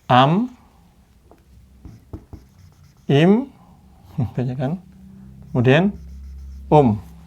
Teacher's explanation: kalau bertemu dengan ba maka n ini nun ini berubah menjadi mim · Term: iqlab